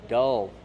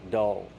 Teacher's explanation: Dull. Use the short sound like up and cup. Dull. Plus the dark L.